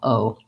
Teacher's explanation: in English, the O is a diphthong, means it's actually gliding between two vowels quickly. And if you just hold the O longer, you'll have the American sound.